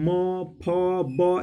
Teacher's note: अगला प्रश्न है 35 नंबर में, म का उच्चारण स्थान क्या है। तो देखिए म, फ, ब, ये सब ओष्ठ से निकलता है, दोनों होंठ सट जाता है, तो ये ओष्ठ, इसका ऑप्शन नंबर ग राइट हो जाएगा।